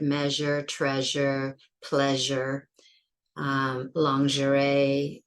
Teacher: it's an SH that's voiced with that zh, a louder sound